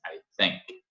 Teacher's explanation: think, língua entre dentes